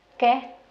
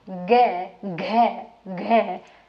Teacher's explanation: तुरंत समझ जाओगे कि यहां ये कंपन हो रहा है और जिनमें कंपन होता है वो घोष होते हैं